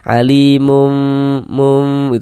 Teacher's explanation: tidak menempelkan kedua bibir tapi tetap ada celahnya